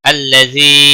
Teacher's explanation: अल्लज़ी या मद्दा है एक अलिफ के बराबर खींच कर पढ़ेंगे